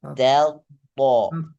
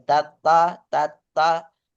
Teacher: Ta tipis, to tebal. Tato. Jadi tato, bukan tata itu dua-duanya tipis.